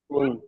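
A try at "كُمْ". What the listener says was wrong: কুম। কুন নয়, কুম কুম। আপনি মিমটা নুন বলেন, কুম, কাব মিম পেশ কুম।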